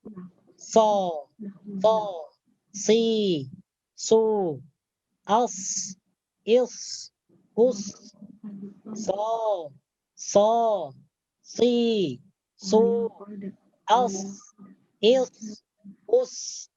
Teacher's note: Jadi huruf sod itu keluar daripada ujung lidah menyentuh bagian gigi bawah. Gigi bagian dalam bawah.